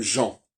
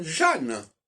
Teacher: Et dans Jeanne, il n'y a plus le en de Jean.